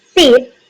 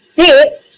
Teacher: S is the voiceless alveolar fricative versus Z is the voiced alveolar fricative. Both are produced with airflow through a narrow space near the alveolar ridge, but S is the voiceless and Z is the voiced.